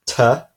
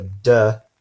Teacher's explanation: the letter T and the letter D so that will be a tough which is voiceless and the duh which is voiced